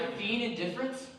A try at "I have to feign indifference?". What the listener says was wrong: Pronounce the E more.